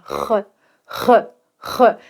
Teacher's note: On arrive au fameux R français. Alors le R français vient vraiment de la gorge. Il faut imaginer que tu te gargarises, d'accord ?